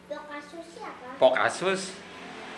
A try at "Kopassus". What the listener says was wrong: Bukan Pokasus. Kopassus. Ngomong dulu yang benar, maksudnya bukan po kasus, ko. Ko. Ko. Pa. Nah, ko pa sus. Bukan sopakus. Bukan kopakus, ko pa sus.